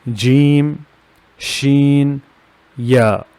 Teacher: From the middle of the tongue, it's jim, sheen, ya.